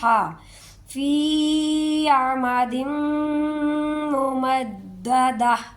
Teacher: عمد ممددہ، یہ والی جو میم ہے یہاں پر ادغام ہوگا، ادغام شفوی ہے، ممددہ وقف کریں گے اور لاسٹ پر ہا کا ہلکا سا ساؤنڈ آئے گا · دیکھیں یہ ہر آیت ہی اس طرح سے ختم ہوتی ہے کہ یہاں پر تو ہا آ گئی ہے ایک دو جگہ، لیکن ہر جگہ تا گول تا ہے، یہ گول تا جہاں پر بھی آ جائے وہاں جب بھی ہم نے وقف کرنا ہے تو اس گول تا کو ہم نے ہا ہی پڑھنا ہے، ٹھیک ہے، تا کی آواز نہیں آئے گی بلکہ ہا کی آواز آئے گی